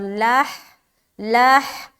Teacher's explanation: ہا کو بالکل سینے کی طرف سے نکالنا ہے